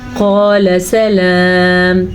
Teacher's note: یہ موٹا قاف ہے اور لام کو لمبا نہیں کرنا